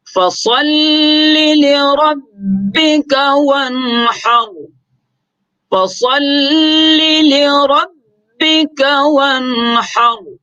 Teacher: تو فَصَلِّ صاد کو موٹا پڑھیں گے، لِرَبِّكَ را کے اوپر بھی زبر ہے تو را کو بھی موٹا کر کے پڑھیں گے